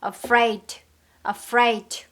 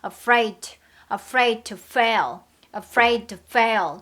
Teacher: D하고 T가 있으니까 소리가 겹쳐지죠